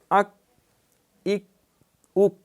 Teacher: اک۔ وہاں تھا آق ایق اوق، دیکھیں یہاں اک اک اک، آواز پیچھے لوٹ کے نہ آئے، وہیں پہ آواز جو ہے اس کو روک دیا جائے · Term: چھوٹا کاف